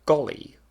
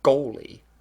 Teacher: listen to how I say golly with the lot vowel, but goalie with this form of the goat vowel